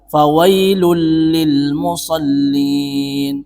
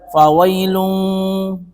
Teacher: Ketika ada tanwin bertemu dengan lam, maka di sini hukumnya adalah idgham, tapi bukan bi gunnah, bila gunnah. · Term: idgham bila gunnah